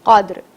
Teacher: دال جزم کے ساتھ آیا ہے تو ہم اسے تھوڑی سی حرکت دیں گے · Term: قلقلہ